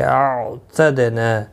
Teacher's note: عین ساکن کو ہلانا نہیں، دال ساکن پر قلقلہ ہوگا